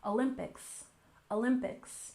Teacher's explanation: we have Olympics with stress on the second syllable